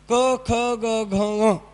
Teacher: काही शब्द हे कंठ असतात म्हणजे कंठातून उच्चारले गेलेले